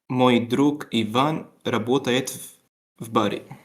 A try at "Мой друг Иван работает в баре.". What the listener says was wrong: Mhm, excellent.